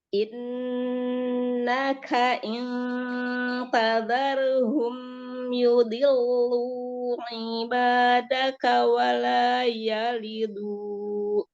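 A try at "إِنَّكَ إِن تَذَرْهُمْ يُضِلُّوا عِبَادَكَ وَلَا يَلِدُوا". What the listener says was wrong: Wala yalidu. Jangan du. Wala yalidu. Jangan ada hamzah du-nya.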